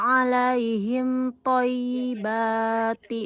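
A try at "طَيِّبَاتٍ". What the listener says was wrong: Thayyibatin. Tanwin Ibu.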